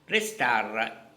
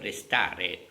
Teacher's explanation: Here in Italian I cut the last vowel E. Restar instead of restare.